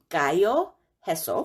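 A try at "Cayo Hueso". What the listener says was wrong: Hueso. The H is silent. Sounds like a W.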